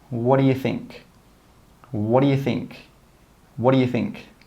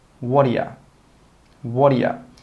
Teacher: We don't say 'what do you'. We join those three words together and we say 'woddayuh'.